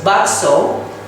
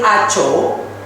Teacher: the S sound is replaced by the C sound also.